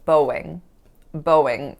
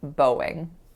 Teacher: there was a W sound in there, even though the spelling obviously doesn't reflect that